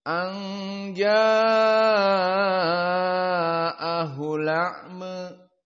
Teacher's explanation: anja dalam keadaan ikhfa karena nun sakinah bertemu dengan jim